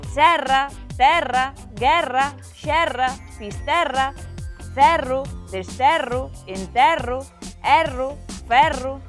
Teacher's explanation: todas as palabras terminadas en erro erra son con E aberto